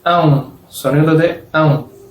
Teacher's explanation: Es una sílaba que es como si fuese am, am o an y después un sonido de u, am, u, pero no separadamente, am, u, pero todo junto, am, am.